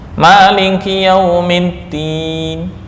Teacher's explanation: tapi karena bacanya sangat pelan, ni itu nggak kedengaran, padahal dibaca dengan ni. Maliki yaumiddin, saya baca ni tapi pelan, yaitu yang disebut dengan raum.